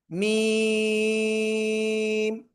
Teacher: Only 4 আলিফ টেনে পড়বো আমরা।